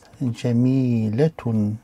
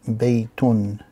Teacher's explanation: the additional n sound is pronounced, but it's not written at the end of the words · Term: tanween